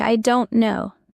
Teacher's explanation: In I don't know, the T is often silent. It sounds like I don't know.